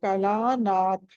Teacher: నాథ థా అక్కడ మహాప్రాణం ఒత్తి పలకాలి